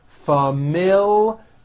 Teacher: with a strong l and there's also a hidden y after the l